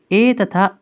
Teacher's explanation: ए तथा ऐ ये 2 स्वर जो हैं उनका उच्चारण स्थान कंठ तालु होता है।